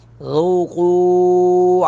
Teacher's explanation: قیل للذین ظلموا ذوقوا وا کو پر کر کے پڑھیں گے ذال کو نرمی کے ساتھ ادا کریں گے باریک پڑھیں گے